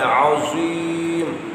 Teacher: زا کو پر پڑھنا ہے، مستعلیہ ہے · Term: مستعلی حرف